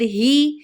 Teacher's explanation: ای کی ساؤنڈ میں، اے کی ساؤنڈ میں نہیں، ہے نہیں بولنا ہے، ہی بولنا ہے